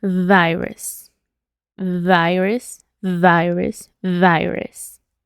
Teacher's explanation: ahora tenemos la v de una F y tiene que vibrar nuestra garganta